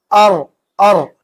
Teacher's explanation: زبان کے کنارے اور اس کی پشت اوپر کے چار دانتوں کے مسوڑوں سے لگائیں گے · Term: را کا مخرج